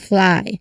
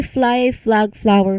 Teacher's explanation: The F sound here is made by air passing between your upper teeth and lower lips. So, as the air is released, of course, the T I mean the L sound comes in immedi immediately. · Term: full cluster